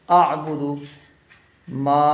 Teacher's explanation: اعبدو، ما، میم کو تھوڑا کھینچیں گے، الف ہے ساتھ میں، میم کو تھوڑا کھینچ کے پڑھنا ہے کیونکہ میم کے ساتھ الف ہے